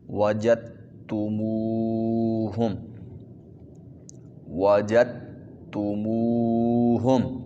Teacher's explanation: جیم کو تا کے ساتھ ملانا ہے، درمیان سے دال جو ہے وہ حذف ہو جائے گی، ختم ہو جائے گی۔